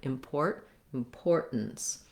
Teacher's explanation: And then again, we have that stop T. So I'm going to be short on my first syllable with the lax I sound